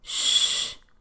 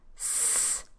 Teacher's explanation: The sound that is produced farther back in the mouth, sh, should sound a bit lower than the one that is produced closer to the front of the mouth.